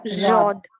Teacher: حرف حافیہ یعنی ضاد ایک ہی حرف نکلے گا، یعنی سائڈس آف دی ٹنگ، زبان کی کروٹوں سے یعنی کو زبان کی کروٹیں آگے یا سوری دائیں یا بائیں اوپر یا نیچے 5 داڑوں کو لگنے سے ادا ہوتا ہے ضاد.